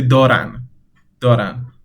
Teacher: for دارند, we kind of delete the de when we are speaking naturally. So you say دارن, دارن.